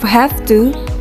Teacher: the pronunciation of have to with an F sound rather than the V sound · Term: assimilation of voice